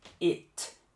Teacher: Reparou no T no final da palavra? Não é tch, não é ti.